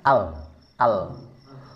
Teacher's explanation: ini ada nafas yang keluar dari samping-samping